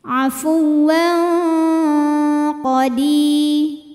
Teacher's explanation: Kemudian ada hukum ikhfa ab'ad ya, karena ada tanwin fathah menghadapi huruf qaf. Maka tanwinnya disamarkan, siap-siap menuju makhraj huruf qaf disertai dengungan. Dengungnya besar karena qaf ini makhrajnya jauh dari nun ya.